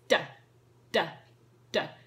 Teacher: two fingers to indicate voiced sound so loud sound and again we're tapping the teeth tapping the tongue against the teeth · And again, we're tapping the teeth, but tapping the tongue against the teeth, and it's D, D, D. Again, obviously, if they're struggling with that one, you can get them to poke their tongue out just a tiny bit through their teeth.